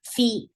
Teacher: For kasra, give E sound, and fa will get sifa of hams, and hams is a flow of breath. This sound should be there whenever you pronounce fa.